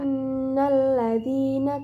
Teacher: Pada ayat ke-6, pada kalimat inna terdapat hukum bacaan gunnah karena terdapat nun bertasdid dan didengungkan sebanyak 3 harokat. Pada kalimat alladzina terdapat hukum bacaan mad tabi'i, dibaca panjang sebanyak 2 harokat.